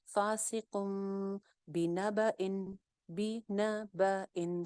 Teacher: جب با آ جاتی ہے تو نون کی آواز میم میں بدل جاتی ہے